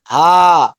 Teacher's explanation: یہ ہا حلق سے نہیں ہے. بس ہا سینے کی طرف سے ہلکا سا